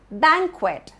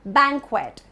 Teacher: The stress is on bang.